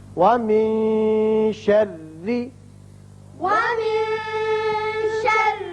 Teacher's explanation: شرری را باریک ہوگا، نیچے زیر ہے